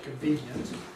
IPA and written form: kənˡviːnjənt (convenient)